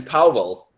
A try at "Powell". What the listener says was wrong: It's like one syllable. Powell. It's one syllable. It's not Powell. It's Powell.